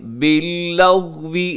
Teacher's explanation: غین کو قلقلہ ہونے سے بچائیے گا